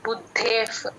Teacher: రెండు పలకాలి బుద్ధేఫ్ బు కి ద ని జాయిన్ చేసి చెప్పాలి బుద్ధేఫ్ విసర్గ ఎఫ్ లాగా అయిపోతుంది